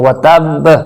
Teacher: یہاں با پر وقف کی وجہ سے قلقلہ کیا جائے گا، لیکن قلقلہ جو ہے یہاں پر شدت کے ساتھ کیا جائے گا چونکہ یہاں پر با پہ شد موجود ہے۔ تو حرف قلقلہ